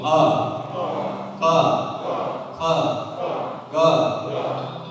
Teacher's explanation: અકુહ વિસર્જનીયાનામ કંઠા, આ બધા અક્ષરો ગળામાંથી જ બોલાય